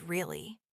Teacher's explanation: Falling tone. Sounds serious or doubtful.